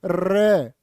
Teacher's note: प्रकंपित होता रे, बोलो रे, जीभ कांप जाएगी तुम्हारी।